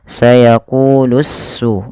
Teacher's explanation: alif lam syamsiyah, yang dimana alif dan lamnya harus diidghamkan kepada huruf sin. Maka sayaqulus su langsung.